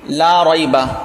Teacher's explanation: لا کو ایک الف کے برابر کھینچ کے پڑھ رہے ہیں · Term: حروف مدہ